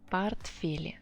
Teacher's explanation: Don't forget that O, when it's unstressed, makes this sound A